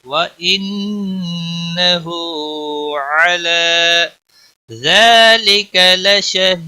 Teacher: ہا کے اوپر الٹا پیش ہے، ایک الف کے برابر کھینچ کر پڑھیں گے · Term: کھڑی زبر